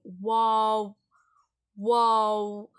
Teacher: இந்த வாவ் என்னன்னா ரெண்டு வாய் உதடுகளையும் குமிச்சாக்குல வரும் · அந்த 2 உதடும் வந்து ரொம்ப வந்து ஜாயிண்ட் ஆகாது.